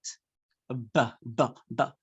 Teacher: Ba is voiced, bilabial, plosive. It is voiced because when you pronounce it, you feel a buzzing sound in your throat.